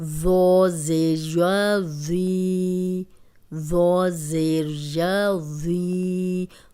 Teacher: ذو موٹا بھی پڑھیں گے، نرم بھی ہے، سیٹی کی آواز نہیں آنی چاہیے